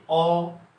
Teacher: ঠিক এটা যদি বলি অ, অ গোলাকৃতি ঠোঁটের আকৃতি হয়, অ গোলাকৃতি, এবং অ বলার সময় জিহ্বা জিহ্বা একদম পিছনের দিকে চলে যায়, এবং এটা নিম্ন মধ্য, তাহলে নিম্ন মধ্য পশ্চাৎ গোলাকৃতি স্বরধ্বনি।